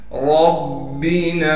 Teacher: ربنا را کو موٹا کر کے پڑھنے کے ساتھ را کو با سے ملا دیں گے اس لیے کہ با پر تشدید ہے اور تشدید ہونے کی وجہ سے با پر تھوڑا ٹھہراؤ رکھیں گے. نون کے بعد الف تھا اس لیے ہم نے نون کو ایک الف کی مقدار کھینچنا تھا، لیکن الف پر مد آنے کی وجہ سے اب ہم نون کو 3 الف کی مقدار کھینچیں گے.